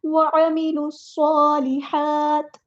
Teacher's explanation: لام کو صاد کے ساتھ ملا دیں گے، صاد میں سیٹی آنی چاہیے ، صاد پہ کھڑا زبر ہے تو ایک الف کے برابر